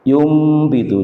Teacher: Jadi nun sukun bertemu dengan ba. Yumbitu, juga suara nun sukun langsung diganti dengan suara mim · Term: Iqlab